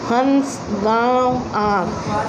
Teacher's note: हवा जो है हमारे नाक और गले से निकलती है · जब हम अनुनासिक शब्द बोलते हैं तब हमारे नाक में एक तरह से वाइब्रेशन होता है